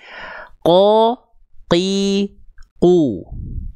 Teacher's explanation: huruf qof pangkal lidahnya nempel ke langit-langit yang lunak saja, yang warna merah saja, maka huruf qof dari segi sifat dan nafasnya akan jahr.